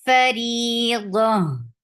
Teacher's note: this ta will be changed into ha whenever we stop, we give waqf on this.